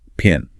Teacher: The P in pin is aspirated. There's a strong puff of air. You can hold your hand in front of your mouth and feel it.